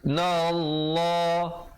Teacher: lafz jalalah datang sebelumnya baris fathah dibaca tebal 2 harakat